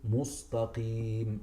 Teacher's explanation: they keep their lips in the form of a dhamma, maybe, so they would say mus.